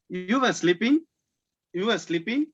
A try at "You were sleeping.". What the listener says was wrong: அது கேள்வியா இருக்கு. அந்த கடைசியில ஸ்லீப்பிங் இழுக்க கூடாது. You were sleeping.